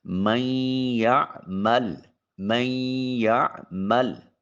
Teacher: یہاں میم کو جب یا سے ملائیں گے تو درمیان میں نون کسی قدر اپنی صفت باقی رکھتا ہے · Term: ادغام ناقص